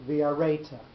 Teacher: The accent would be on the second last syllable.